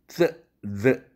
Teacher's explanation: 이빨치, the 이런 음인데 혀끝과 윗니가 닿으면서 나는 음입니다. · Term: 설치음